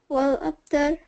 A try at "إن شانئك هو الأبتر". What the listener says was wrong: هو الأبتر. هو الأبتر. Not والأبتر. هو والأبتر. First you have to say هو والأبتر.